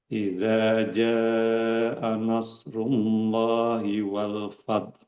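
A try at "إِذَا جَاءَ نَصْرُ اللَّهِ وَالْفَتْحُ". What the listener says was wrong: Hati-hati, nanya jangan sampai tebal. angin tak keluar, fath. Kemudian disusul dengan angin ha dari kerongkongan. Ada dua angin. Taknya juga harus ada anginnya. Baru disusul ha.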